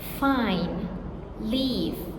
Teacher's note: Labodental fricatives. Teeth on lip. Fine. Leave voiceless.